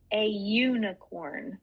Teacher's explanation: it's a y so it's kind of a semi vowel